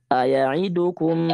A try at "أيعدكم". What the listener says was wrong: لا تختلس أيعدكم لا تختلس